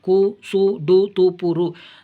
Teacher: தனிக்கூறில் அல்லாது சொல்லுக்கு இறுதியில் வல்லின மெய்கள் ஏறிய உகரம் கு சு டு து பு ரு தன் ஒரு மாத்திரை அளவிலிருந்து அரை மாத்திரை அளவாக குறைந்து ஒலிக்கும். இவ்வாறு குறைந்து ஒலிக்கும் உகரம் குற்றியல் உகரம்.